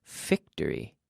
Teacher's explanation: The V does not have a special relationship with the B, like it does in Spanish. So the V is just a vocalized or voiced F.